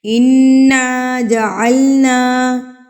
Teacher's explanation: انا پر نون مشدد اور میم مشدد پر کیا کرنا ہے؟ ہم نے گنہ کرنا ہے